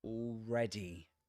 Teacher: And the last vowel sound, the last syllable, has the I vowel sound. This is the short fleece vowel sound